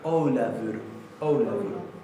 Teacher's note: Recuerden que esta F se pronuncia casi como si fuera una B corta